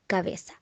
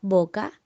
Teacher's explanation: la B es intervocal y su articulación es labio-dental fricativa, pues el labio inferior se sitúa tras los dientes superiores. Y en la palabra boca, la B es inicial y su articulación es bilabial